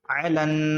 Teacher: عین زبر ع، لام نون زبر لن، یہاں پر نون مشدد ہے، ایک الف کے برابر گنہ ہوگا